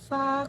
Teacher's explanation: konsonan geseran atau frikatif, labiodental, tak bersuara